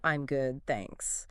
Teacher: It links good smoothly into the following consonant in thanks.